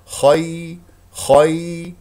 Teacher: ياء لين لا تضغط على المخرج ولا تخرج معها هواء